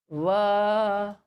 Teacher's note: Danta means teeth, oshtha means lips. That letter which is pronounced with the help of upper teeth and lower lip. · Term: danta oshtha va